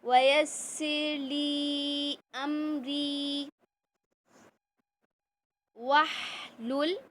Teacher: ہا کا مخرج وسط حلق سے، پورے خیال کے ساتھ اس کو ادا کیجئے